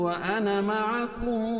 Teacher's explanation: قال فاشهدوا وانا معكم، میم ساکن کے بعد میم آئے تو ادغام شفوی ہوتا ہے، یعنی میم کا میم میں ادغام ہوگا، ادغام مال غنہ ہوگا، یعنی غنہ کے ساتھ ادغام کریں گے اور پہلے حرف کو مدغم کہیں گے اور دوسرے حرف کو مدغم فی.